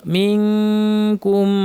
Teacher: মিমকে ধরবে, মিমের উপর তাসদীদ লম্বা গুণা, রসুলাম মিনকুম, এখানে ইখফা, নুন সাকিন বা কাফ আসছে, জিহ্বা কাফের মাখরাজে লাগিয়ে দিব, নাক থেকে গুণনা করব